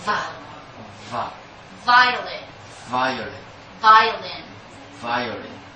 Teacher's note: you bite your lips gently but you produce vibration you don't blow air you vibrate the air